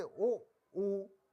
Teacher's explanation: इनमें होठ का प्रयोग किया गया है, तो इनका उच्चारण स्थान होष्ठ है, उ का उच्चारण स्थान होठ है।